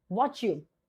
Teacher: Like if I say what you do, so this t and again this z sound, it gives you ch sound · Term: assimilation